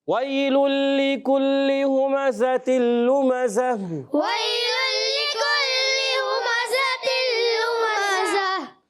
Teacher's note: اور یہاں پر دیکھیے، یہاں پر بھی تنوین کے بعد پھر لام ہے، یہاں پر بھی وہی قاعدہ ہے، ادغام بلا غنہ، بغیر غنے کے ادغام کرنا ہے، ملانا ہے، مگر غنہ نہیں کریں گے · اور گول تا کو وف کی صورت میں ہا سے بدل دیں گے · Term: وف بالابدال